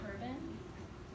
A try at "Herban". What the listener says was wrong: The H is silent. It's debated. Some people say Herban, like herb, or herb. I say urban.